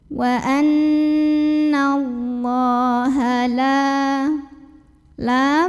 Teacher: lamnya ini kita panjangkan 2 harokat saja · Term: mad tabi'i